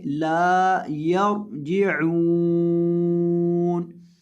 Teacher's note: را کو موٹا کر کے پڑھیں گے اور عین کو حلق کے درمیان سے ادا کریں گے